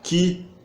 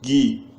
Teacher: Timbre não, vocalização. Uma é surda e outra sonora